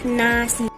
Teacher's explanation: Yang terakhir ada konsonan dental, yaitu konsonan yang dihasilkan oleh ujung lidah sebagai artikulator dan daerah antar gigi sebagai artikulasinya